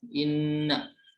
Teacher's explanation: inna gunnah karena bertasdid, teman-teman ya. Dibacanya inna, jadi agak berdengung